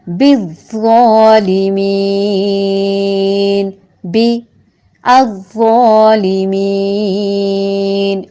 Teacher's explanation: پر حروف میں سے ہے، پر کرنے کے لیے زبان کو جڑ سے اٹھائیں گے. اگر ملائیں گے تو بز ہوگا، اگر الگ کریں گے تو حمزہ وصلی کو زبر دیتے ہوئے جوڑیں گے، کیونکہ حمزہ وصلی کے بعد حرف لام آ رہا ہے.